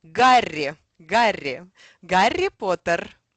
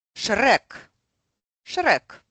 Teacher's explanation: lots of rolled R's, which are easy to pronounce if you are from Scotland, for example. Or if you speak Spanish, that would be a very similar rolled R sound.